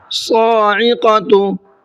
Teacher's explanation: صاد کو منہ بھر کے پڑھنا ہے اور کھینچ کر کے بھی پڑھنا ہے